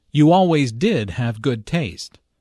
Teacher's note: Notice the stress on did which uses to emphasize the fact that Julia does have good taste.